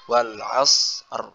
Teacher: Jadi hurufnya ini kan ibarat kita membaca dua huruf sukun. Jadi masing-masing harus diberikan haknya, sifat hurufnya. Jadi shotnya dulu baru ro.